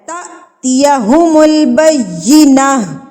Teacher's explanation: تا پہ آپ جھٹکا دیں گے کیونکہ جب الف کے اوپر یہ جزم آ جاتی ہے نا، جب یہ سکون کی حالت آ جاتی ہے تو الف کو جھٹکا دے کے پڑھا جاتا ہے